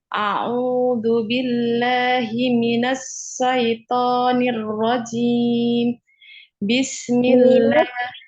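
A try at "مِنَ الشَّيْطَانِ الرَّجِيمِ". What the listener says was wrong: Dengan shin ya, jangan sin. Shin ya, tengah lidah.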